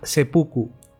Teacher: Una regla fonética, por ejemplo, en el japonés de la pronunciación del chino, dice que el su, cuando va delante de fu, le ocurren dos cosas. Una es que hay un ensordecimiento del fu que pasa a pronunciarse pu